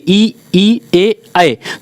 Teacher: तो आगे जीभ के आगे के हिस्से का इस्तेमाल हो रहा है, तो ये क्या होगा, अग्र स्वर होगा